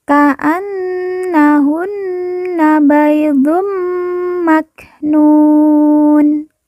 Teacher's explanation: Nun yang bertasjid kita baca ditekan ditahan dua harakat dan didengungkan